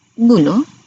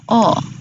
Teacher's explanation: vokal belakang sempit ialah bulu, manakala vokal belakang separuh sempit bunyinya O